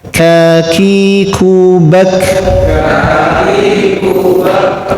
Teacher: lidahnya sudah nyentuh ke langit-langit yang mulai keras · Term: kaf